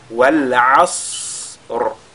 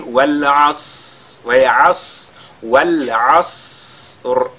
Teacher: le Sad, il a la caractéristique de Al-Hams. C'est-à-dire il y a l'écoulement de l'air qui se produit au moment de sa prononciation. Ce qui nous permettra d'allonger, n'est-ce pas, sa prononciation avant de lire la lettre Ra.